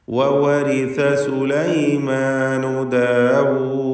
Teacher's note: ദാലിൽ വഖഫ് ചെയ്യുകയാണ്, സുക്കൂൻ വരുന്നു, ഖൽഖല കുബ്ര നൽകേണ്ടതുമാണ്.